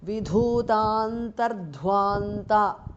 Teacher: Antaha visarga changes to repha.